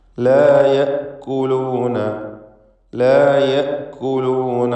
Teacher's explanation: യഅ്കുലൂൻ എന്നായി പോകരുത്, യാക്കുലൂൻ എന്നൊന്നും ആവരുത്. യഅ്കുലൂൻ ഹംസ ഷിദ്ദത്തോടുകൂടി ഉച്ചരിക്കേണ്ട അക്ഷരമാണ്.